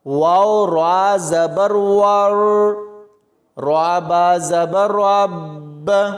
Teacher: را کے اوپر شد ہے تو اس کو سختی سے پڑھا جائے گا اور را کو موٹا کر کے پڑھیں گے